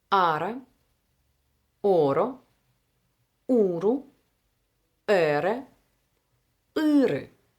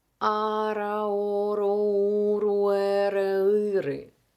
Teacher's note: When R is between vowels, it becomes a one-tap sound.